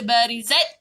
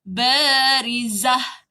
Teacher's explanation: Ta marbutah, terus bunyi ta, berhenti bunyi ha. Jadi jangan baca barizat tapi barizah.